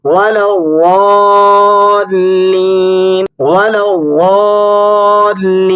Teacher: زبان کے پچھلے حصے کو تالو کی طرف بلند کریں اور خوب موٹی اور دراز آواز میں پڑھیں